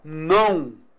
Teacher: Eu tenho vogal AN e semivogal U.